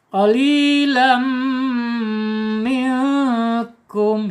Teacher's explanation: Tetapi kalau dia fathah saja, kemudian di sini tidak ada tasdid ya, panjang la, tapi ini tidak ya, karena di sini ada hukum nun sukun atau tanwin menghadapi huruf mim. Ini bacanya idgham bi gunnah kamil ya, ditahan, dilebur, ditahan dan 2 harokat ya. · Nun sukun ketika menghadapi huruf kaf ya, ini adalah ikhfa hakiki ya, ikhfa hakiki. Ditahan 2 harokat dan dibaca samar